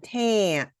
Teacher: So that nasal sound of the n causes the ah to become more nasalized.